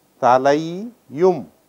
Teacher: Talai plus um, talai yum. You have brought in a semi vowel so that the combination will be a smooth one.